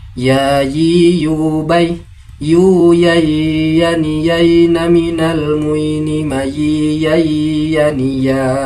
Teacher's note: Huruf ya makhrajul hurufnya berada pada bagian tengah lidah dan bagian tengah langit-langit mulut paling atas.